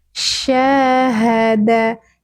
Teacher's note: sya tengah lidah menyentuh langit-langit, sifatnya at-tafashi, menyebarnya angin dari rongga mulut.